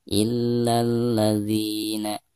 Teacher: dianggap mad tabi'i karena ada vokal kasrah dzi diikuti oleh ya sukun, dibaca untuk dua harakat · Jadi, alif lam itu diabaikan atau tidak dibaca. Jadi, dari bacaan "la", langsung menuju ke "la" di sini. · Di sini ada alif lam lalu berhadapan dengan salah satu huruf syamsiah ya. Maka alif lam tersebut tidak dianggap atau tidak dibaca ya. Jadi dari bacaan la langsung ke la yang ada di sini ya. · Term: alif lam syamsiyah